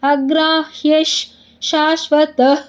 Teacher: ವಿಸರ್ಗದ ಮುಂದೆ ಶ ಇದೆ ಅದಕ್ಕೆ ಅರ್ಧಶ